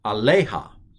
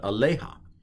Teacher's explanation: the accent I believe is on the lay